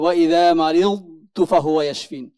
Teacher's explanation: দদ দ্রুত উচ্চারণ হবে না, যেহেতু এই হরফে একটি সিফাত রয়েছে ইস্তিতলাত এবং আরেকটি সিফাত রয়েছে, দুই সিফাত মিলে উচ্চারণটা একটু লম্বা হবে।